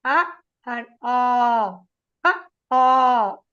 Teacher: the mouth will be open. They are called kantavyaha. They start from the throat.